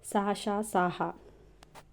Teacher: ఊష్మాలు అంటే గాలిని బయటకి ఊదుతూ కలిగేవి ఊష్మాలు సా షాహ వీటిని ఊష్మాలు అంటారు. పరుషాలు సరళాలు కాకుండా మిగిలిన హల్లు